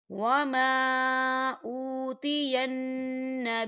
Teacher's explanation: یہاں نون مشدد ہے تو یہاں غنہ ہوگا